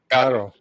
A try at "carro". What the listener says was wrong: Roll the R. Carro.